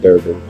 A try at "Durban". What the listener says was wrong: Durban. There's no R in Durban.